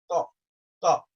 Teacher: it touches exactly the roots of the front teeth